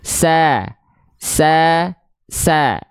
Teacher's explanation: Kita mulai untuk melafalkan huruf fathah yang karakternya tipis alias vokal A. Dia buka mulut sambil seolah tersenyum. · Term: fathah vokal A